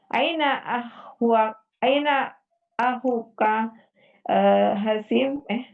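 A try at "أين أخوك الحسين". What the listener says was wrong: Disambung aja alif lamnya. Aina ahukal Husain.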